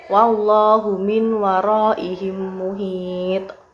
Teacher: ada huruf qalqalah yaitu to yang diwakafkan di akhir kalimat dengan harokat dhammah